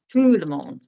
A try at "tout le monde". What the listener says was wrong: There you go. That's perfect.